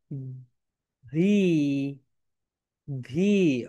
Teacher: মনে আছে my dear student, যখন আমরা ভি প্রোনাউন্সিয়েশন করব, যখন আমরা ভি প্রোনাউন্সিয়েশন করব, কি করব বলো তো? আমাদের উপরের দাঁত নিচের ঠোঁটের সঙ্গে টাচ করবে